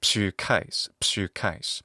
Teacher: with the long u in the first syllable